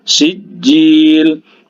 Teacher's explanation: Huruf jimnya bertasydid. Jadi dia ditahan ya. Sejenak.